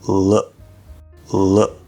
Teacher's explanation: at the end of look we have that k which fully pronounced would be k, but this is commonly stopped unless there's something after it that would activate or change it.